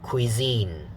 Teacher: you see the spelling is an s but uh that's why you have to look at the ipa actually the sound is a z sound